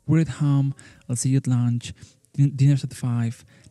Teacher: We cannot perceive that grunt, but neither can we perceive the sound of the vowel. So we are not going to listen that a from at, and we only listen this t, this quick t.